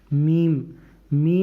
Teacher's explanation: मीम दोनों होठों की खुश्की को जब मिलाएंगे तो मीम अदा होगा